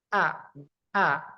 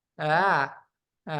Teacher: Huruf tenggorokan harus ada Napas yang terhenti itu, suara yang terhenti.